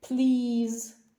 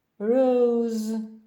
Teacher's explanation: крім того між двома голосними вимовляється як з